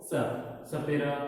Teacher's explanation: दंत्य स को दांत से बोलते हैं